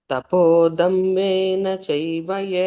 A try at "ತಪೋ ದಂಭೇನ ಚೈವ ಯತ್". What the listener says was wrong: ಇಲ್ಲ ಮಹಾಪ್ರಾಣ ನೋಡ್ತಾ ಇಲ್ಲ ನೀವು ಪೂಜಾರ್ಥಂ ತಂಭೇನ ಭ ದೊಡ್ಡ ಭ